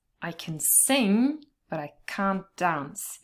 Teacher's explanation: in the positive part you only stress the verb sing but in the second part we have can't in the negative so we do have to stress it